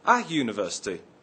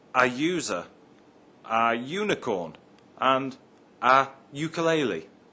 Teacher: at the word university we say a university not an university the word university begins with a you but is pronounced with a why sound at the beginning